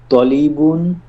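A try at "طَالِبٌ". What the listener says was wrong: তলিব না, তালিবুন,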